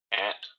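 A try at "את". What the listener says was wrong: No, see, you're giving it a sound. Don't give it a sound. The tav has a sound. You got to say something. How do you pronounce aleph tav if the aleph has no sound?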